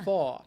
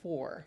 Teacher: You want to do what is called a non-rhotic accent, meaning the r's are not pronounced. So they say fa instead of for.